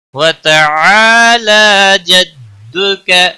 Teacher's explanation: لا کے اوپر مد اصلی ہے، کھڑی زبر، ایک الف کے برابر کھینچ کر پڑھیں گے